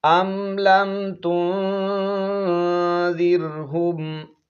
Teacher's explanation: زال کو نرمی کے ساتھ ادا کرنا ہے، سیٹی کی آواز اس پر بالکل نہ آئے، زبان کی جو نوک ہے، سامنے والے جو 2 دانت ہیں اوپر والے، ان کے کناروں کے ساتھ زبان کی نوک لگے گی تو زال ادا ہوگا۔